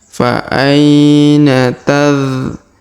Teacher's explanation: Huruf bu kita panjangkan 2, 4 atau 6 harokat karena di depannya terdapat waw sukun sebelum huruf pemberhentian, dan huruf pemberhentian huruf na kita sukunkan atau kita matikan.